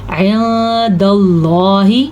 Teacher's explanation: اللہ کا نام پر پڑھا جائے گا کیونکہ اللہ کے نام سے پہلے زبر ہے اور ساکن، نون ساکن ہونے کی وجہ سے اخفا بھی ہو رہا ہے۔